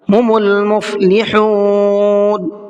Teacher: مفلحون کے اندر بڑی ہا ہے اور اس کو حلق سے نکال کر کے ادا کریں گے۔ چھوٹی ہا سے بالکل الگ اس کا پروننسیشن ہوتا ہے، اگر ہم اس کو فرق نہیں کریں گے تو یہ چھوٹی ہا بھی بن جائے گی۔